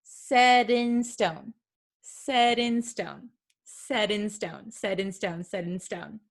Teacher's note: However, the American T is quite tricky. So sometimes it is something called a flap T. It sounds like a soft D sound